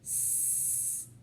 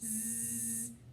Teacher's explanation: the sound S, which doesn't vibrate, and Z, which does vibrate.